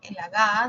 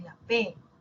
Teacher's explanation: ambos son oclusivos una es Sonora la otra es sorda